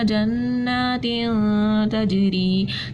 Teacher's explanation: ٹھیک ہے, دو زیر کی تنوین کے بعد کیا آ رہی ہے, تا آ رہی تھی, اس لیے ہم نے اخفا کیا. جیم جو ہے وہ قلقلہ میں سے تھا, یہاں پہ ہم نے قلقلہ کر دیا کیونکہ جیم ساکن ہو رہا تھا